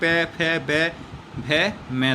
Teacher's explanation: जो प वर्ग है वो पूरा बोला जाता है ओष्ठ से, यानी हमारे होठों की सहायता से उच्चारण इसका होता है पूरे वर्ग का, यानी पांचों का।